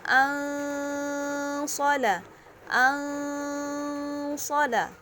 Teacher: Dan yang kita ketahui huruf so ya, yang kita ketahui huruf so ini termasuk salah satu huruf ikhfa. Jadi kita membacanya samar-samar dan dengung.